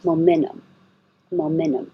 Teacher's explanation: you can say it without the T because of the situation the t is after the n in the unstressed syllable